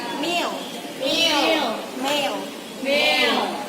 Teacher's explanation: the place of m sound is in bilabial